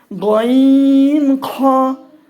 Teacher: হলকের শেষ হইতে উচ্চারিত হয় গইন খ।